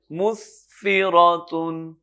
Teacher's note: میم سین اور میم پہ پیش، اس کو پڑھیں گے مس سین. سین کی جو صفت ہے وہ اس کے ساتھ رہے گی، سٹی کی آواز ہوگی، تیز آواز ہوگی